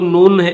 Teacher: یہ جو نون ہے اس نون کو طا کے ساتھ ملائیں گے, یہ تا نہیں پڑھیں گے.